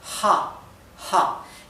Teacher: Y se pronuncia como la h inglesa. Es parecido a una J del español, solamente que más suave.